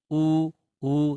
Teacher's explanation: ओष्ठ अर्थात इनके उच्चारण में आपकी होंठ सक्रिय होंगी, ऊ देखिए होंठ जो है वो गोल हो जाती हैं, तो होंठ का रोल है यहाँ पर, इसलिए इनका उच्चारण स्थान है ओष्ठ।